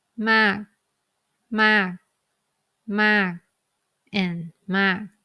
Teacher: We do not have the k final sound. So that means all these 4 words must be pronounced exactly the same.